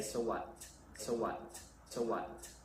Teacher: you kind of imagine there's a t there but you don't have to say